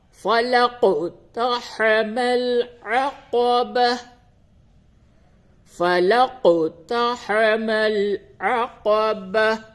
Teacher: قاف میں قلقلہ ہوگا کیونکہ قاف کے اوپر جزم ہے